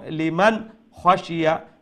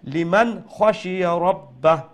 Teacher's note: নুন সাকিনকে স্পষ্ট করে পড়বো, নাকের দিকে কোনো আওয়াজ যাবে না। লিমান খাশিয়া রাব্বাহ, এইরকম।